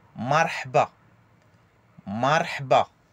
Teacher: Le 7 ou le H expiré dans la gorge, aigu.